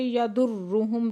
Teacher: یضرہم را مشدد سختی سے پڑھیں گے اور پھر میم ساکن پہ اظہار شفوی ہے